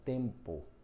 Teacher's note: pode ser que a letra M esteja numa palavra só para nasalizar uma vogal